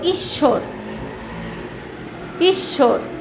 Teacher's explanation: আবার দেখা যায় যে তোমরা যদি শব্দ এবং উচ্চারণ আবার লেখো ঈশ্বর, ঈশ্বর, ঈশ্বর লিখতে গেলে লেখা হচ্ছে তালেবস্যয় বয় র, কিন্তু উচ্চারণ করতে গেলে ঈশ্বর, বয়ের উচ্চারণ হচ্ছে না